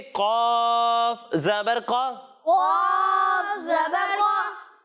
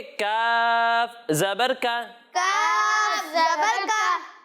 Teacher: जब हम कौफ की अदायगी करेंगे तो इसे मोटा पढ़ेंगे और जब हम काफ की अदायगी करेंगे तो इसे बारीक पढ़ेंगे।